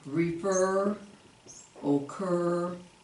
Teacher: two-syllable verb with the emphasis or the accent on the second syllable